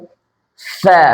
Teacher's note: ফা আপনার দাঁতের সাথে কিন্তু ঠোঁট লাগতেছে